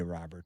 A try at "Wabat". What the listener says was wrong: It's Wabat. It's spelled with a R, but it's pronounced Wabat. Nope, it's Wabat.